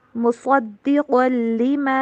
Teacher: صاد اور قاف دونوں کو موٹا کر کے پڑھیں